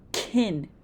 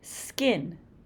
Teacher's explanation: Notice that the k is not as strong.